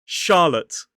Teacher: the second unstressed syllable is l— ə— t— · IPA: /ˈʃɑːlət/